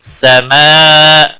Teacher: سماء مد متصل ہے، 5 الف کے برابر کھینچ کر پڑھیں گے